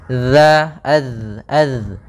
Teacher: dia sifatnya sifat jahar dan juga dia memiliki sifat rokhawah, mengalirnya suara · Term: huruf dzal